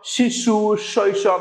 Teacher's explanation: এই বর্ণগুলো উচ্চারণের সময় শীষের সৃষ্টি হয়। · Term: শীষ ধ্বনি